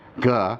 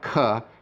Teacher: So aired stops, if you recall, have a puff of air being enunciated as you say the letter, but the unaired stops don't have that puff of air. So there's a big difference, for example, between a gamma, g, and a kappa, k.